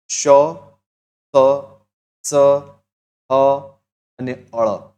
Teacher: આ બોલતી વખતે મોઢામાંથી હવા ઘસાઈને બહાર આવે છે જેનાથી ગરમી પેદા થાય છે એટલે જ તેને ઉષ્મ વ્યંજન કહેવાય